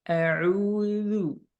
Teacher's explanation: untuk huruf za tidak ada sofir ya